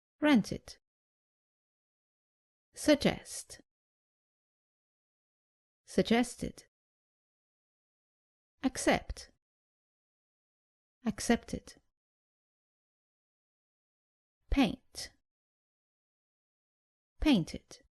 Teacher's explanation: When ed sounds like it. This happens when the infinitive ends in the consonants t or d.